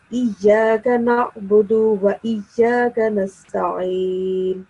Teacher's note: Just make sure that you do not prolong the sound of alif in Iyyaka.